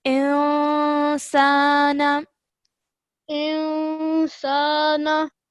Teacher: when you join the alif to the noon, do so with a 2-second partial nasal sound